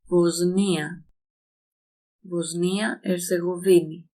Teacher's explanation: Notice here that the sigma becomes a Z sound when in front of ni.